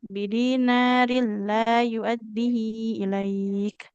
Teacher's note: Nunnya itu juga panjang ya. Huruf nunnya dua harakat.